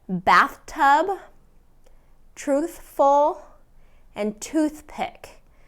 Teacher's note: Now let's talk about the middle of words. Okay, so the TH sound is voiceless in the middle of words before a consonant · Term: voiceless th sound, voiceless TH sound